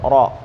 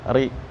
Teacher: Ro itu kalau harokatnya dhammah atau fathah itu tebel, ro. Tapi kalau kasroh, tarqiq, ri. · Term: huruf ro